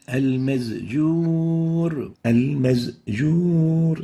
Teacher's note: So instead of the sin, we pronounce it as a zay.